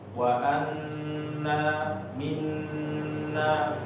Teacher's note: Ditahan dilamain sedikit enggak apa-apa bacaannya ya. Jadi jangan ragu-ragu ketika membaca nun dan mim yang ada tiga tiduran di atasnya itu ditahan terlebih dahulu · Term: nun dan mim yang bertasydid